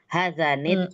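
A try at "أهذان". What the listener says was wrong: Ada hamzahnya. Ahadzani.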